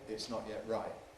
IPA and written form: ɪʔs ˈnɒʔ jeʔ ˈraɪʔ (It's not yet right)